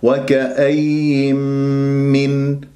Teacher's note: نون ساكنة بعدها ميم إدغام بغنة